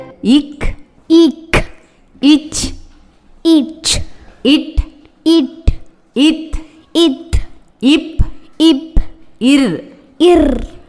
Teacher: இந்த எழுத்துக்களின் உச்சரிக்கும் போது வலுவான மூச்சு காற்று கொடுத்து அழுத்தத்தால் வலிமையா இருக்கும் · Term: வல்லின எழுத்துக்கள்